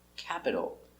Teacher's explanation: The capital pronunciation: k, a, cat, p, cap, I, capid, d, capid, a, capita, ol, capital. Remember, the T between two vowels we pronounce with the D sound, d, capital.